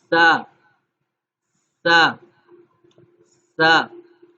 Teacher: سین جو سیٹی کی آواز ہے وہ نقطے والے جو با تا تا ہے وہ بالکل سائلنٹ سا پڑا جائے گا، اس میں سیٹی کی آواز نہیں آئے گی، اس سین میں سیٹی کی آواز آئے گی